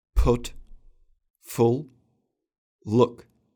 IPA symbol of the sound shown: ʊ